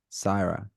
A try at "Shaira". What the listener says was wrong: Is it Syra or Shira? SH. So it's Shira.